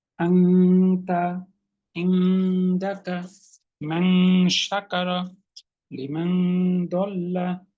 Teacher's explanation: এগুলো গুণনা করে নাক দিয়ে পড়তে হচ্ছে